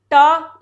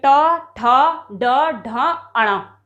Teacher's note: एक है ट वर्ग जो कि जीभ से बोले जाते हैं, और ट वर्ग ही ऐसा है जो मूर्धन्य, मूर्धन्य का मतलब है जिसमें हमारी जीभ क्या होती है, फोल्ड होती है। आप बोल के देख सकते हो ट, इसमें भी हमारी जीभ मुड़ी है, ट ठ ड ढ अण।